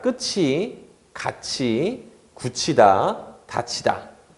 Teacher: 이런 것들은 전부 다 티읕이 이모음을 만나서 치읓으로 바뀐 것이다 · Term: 구개음화